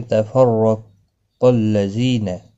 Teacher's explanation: قاف مستعلیہ ہے رو زبر کی وجہ سے پر پڑھا جائے گا